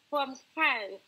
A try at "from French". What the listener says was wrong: So we need to pronounce the CH sound at the end. From French.